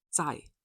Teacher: 在 is the fourth tone word. It falls quickly, shorter and quick.